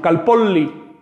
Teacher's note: La L doble siempre se pronuncia como L larga, nunca como la Y del español.